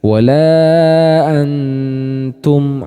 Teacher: teman-teman jadi cara melafalkan huruf ini atau bacaan ini if hakiki pada kata Antum Nun sukunnya cenderung lebih jelas